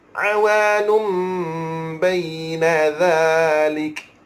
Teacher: Baik, mim ni kalau tuan-tuan jumpa dalam Quran, ia adalah iqla', tanda iqla' di dalam Al-Quran. Dengung 2 harakat, tutup mulut terus.